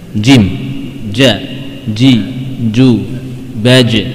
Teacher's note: membentur antara langit-langit dengan bagian tengah lidah